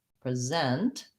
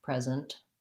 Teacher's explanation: in this case it becomes a z rather than s present that's a z2 uh present longer on the second syllable